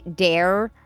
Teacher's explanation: if you're in Wisconsin specifically, they actually get rid of there and say dare